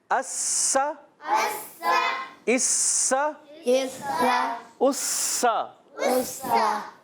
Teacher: سین میں سیٹی, سا میں سیٹی نہیں ہوتی